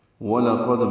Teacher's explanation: قاف پر پڑھنا ہے اور دال سے ملانا ہے، دال ساکن پہ قلقلہ ہے